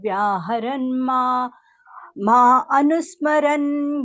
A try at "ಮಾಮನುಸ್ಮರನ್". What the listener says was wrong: ಮಾ ಅನುಸ್ಮರಂ ಅಂತ ಹೇಳ್ಬಾರ್ದು, ಮಾಂ ಅನುಸ್ಮರಂ ಅಂತ ಹೇಳ್ಬೇಕು. ಬರೀ ಮಾ ಅನುಸ್ಮರಂ ಅಂದ್ರೆ ತಪ್ಪಾಗತ್ತೆ ಮಾತಾಜಿ. ಮಾಮನುಸ್ಮರಂ ಅಂತ ಸೇರ್ತಿ ಹೇಳ್ಬೋದು. ಮಾ ಅನುಸ್ಮರಂ ಅಂತ ಹೇಳ್ಬಾರ್ದು.